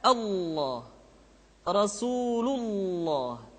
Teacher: Yang ketiga adalah pengucapan lafaz Allah. Lafaz Allah dimanapun kapanpun, maka lam yang terdapat pada lafzul jalalah tersebut mesti ditebalkan.